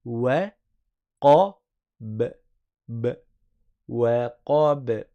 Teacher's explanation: Là, on a la première lettre amincie, la deuxième qui est emphatique, qui est le qaf, et la troisième qui est amincie. Mais le ba, il a une qalqala, on fait rebondir le son.